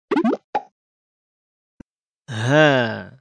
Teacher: dikeluarkan dari pangkal tenggorokan